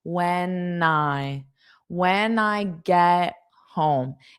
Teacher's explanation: when it's not I, it's nigh, because that allows you to connect those sounds